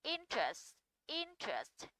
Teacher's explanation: âm thứ nhất là Y ngắn và âm thứ hai là âm ơ, đều là âm ngắn, thì trọng âm sẽ rơi vào âm số 1